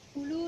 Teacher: Mad tabi'i waw, dibaca panjang 1 alif atau 2 harokat